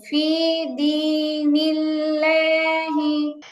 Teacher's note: হায় টান হবে, দালেও টান হবে